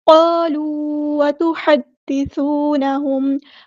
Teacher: قالوا وتحدثونهم ہا کو وسطی لیکن مڈل تھروٹ سے ادا کریں. دال مشدد ہے تو اس کو ہم 2 بار ادا کریں گے. ایک بار ساکن کر کے ایک بار اس کی حرکت کے مطابق